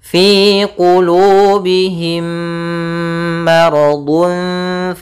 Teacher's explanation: mirip tapi sama yaitu adanya mim mati bertemu mim caranya adalah kita memasukkan mim yang pertama kepada yang kedua dan ditahan suaranya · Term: idgham, idgham mimi